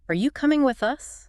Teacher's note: Feel that rise on you and with us and the little dip at the end. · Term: typical question pattern